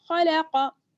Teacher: खा ज़बर खा, लाम ज़बर ला, खला, क़ाफ ज़बर क़ा, खलक़ा, तीनों को बराबर से पढ़ना है, किसी को भी खींचना नहीं है